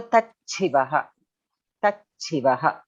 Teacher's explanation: The Shakara will be replaced with Mahaprana Chakara.